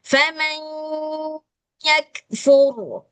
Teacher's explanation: Jangan lupa ini ada idgham maka seharusnya dia keluar dari rongga hidung. Khasyum dia makhrajnya dari khasyum.